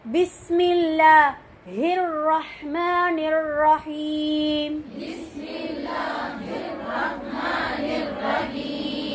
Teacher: ராவையும் வல்லினமா சத்து செய்யப்பட்ட ரா வலிமையான ரான்னு சொல்லுவாங்க